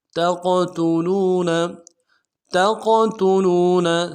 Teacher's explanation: قاف کو موٹا ادا کریں گے اور جزم کی وجہ سے قلقلہ بھی ہوگا ، تا کو نرم سے ادا کریں گے، لام کو